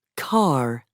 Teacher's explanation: most Americans also pronounce the r at the end of words